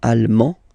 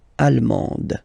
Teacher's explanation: you don't pronounce the final D, but then you pronounce it here for the feminine form.